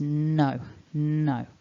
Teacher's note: with a word like no we have the vibration up in the nose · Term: N vibration